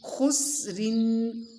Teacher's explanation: خا کی آواز موٹی ہوگی، سین کی باریک، اور را دو زر رن کو بھی باریک پڑھنا ہے